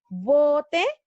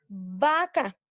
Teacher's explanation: la B es labial porque se pronuncia con los labios y la otra es V porque es labiodental y se pronuncia con los labios y con los dientes